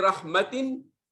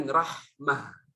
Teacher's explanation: ketika disambung adalah ta, ketika diwaqaf itu menjadi ha